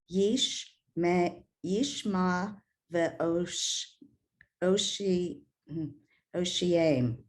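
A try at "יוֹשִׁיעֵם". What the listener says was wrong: Except in this case, the yud has a sound like a Y. The yoshiem.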